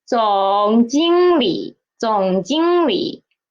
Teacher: The 理 is a half third tone